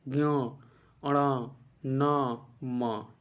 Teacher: नासकीय, याद रखिए नासकीय वर्ण किसे कहते हैं? जैसे कि जिन वर्णों का उच्चारण स्थान नाक से होता है, हमारे नाक से बोले जाते हैं